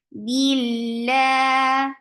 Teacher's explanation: lafz jalala will be light because there is kasra before it. Don't drop this E sound, even you are attaching it with the coming up letter.